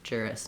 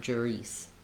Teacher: Watch out that you don't make this a tense E sound, but rather a lax I sound.